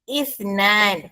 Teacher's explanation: huruf sa bunyi hurufnya antara hujung lidah kita dengan hujung gigi atas. If bila awak letak jari tangan depan mulut masing-masing ada angin keluar.